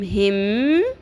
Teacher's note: ہا زیر میم, اب اس میں ہا کی زیر جو ہے اگلے تشدید والے میم کے ساتھ مل جائے گی